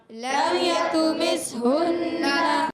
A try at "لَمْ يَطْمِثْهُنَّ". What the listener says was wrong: آواز آئی، لم یطو، یطو، تو کو موٹا رکھنا ہے، یہ بھی تو تھا، یہاں بھی موٹا۔ لم یطمثہن،